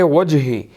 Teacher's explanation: جیم یہاں پر حروف قلقلہ میں سے ہے، یہاں پر قلقلہ ہوگا، ہم ذرا اس کو ہلا کر پڑھیں گے